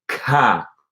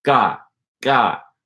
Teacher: That's how an English speaker would pronounce it, ka. You can put your hand in front of your mouth and feel that puff of air coming out on the K. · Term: English K